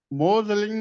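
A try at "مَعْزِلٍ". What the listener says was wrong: نہیں معذلین، یہاں پہ زبر. میں اتنا کر لیں پہلے، وکان فی معذلین.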